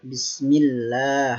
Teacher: Oke, di sini bismillah ada lafdzul jalalah, yaitu disebut dengan bismillah, tarqiq, yaitu dibaca secara tipis. Panjangnya yaitu hanya 2 harokat.